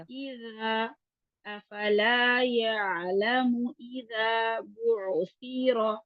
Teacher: ان کو زبان کی نوک اوپر والے دانتوں کے کناروں سے اس طرح لگانی ہے کہ زبان جو ہے دانتوں سے تھوڑی سی باہر بھی آئے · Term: ذا سا اور ظا